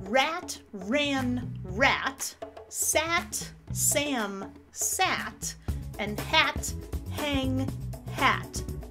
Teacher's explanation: The ah should be the same with the nasal and without the nasal.